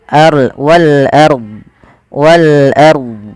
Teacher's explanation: Ro tafhim. Ro tafkhim yaitu rnya dibaca dengan tebal